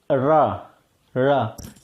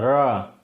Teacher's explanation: जीभ एकदम घूम के मुड़ गई ना, रा, आगे का पोर्शन जीभ का घूम के पीछे जा रहा